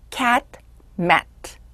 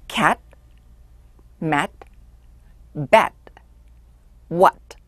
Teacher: T가 같은 T인데도 단어의 끝에 오면 소리가 굉장히 약하게 나요. 어떤 땐잘 들리지도 않아요.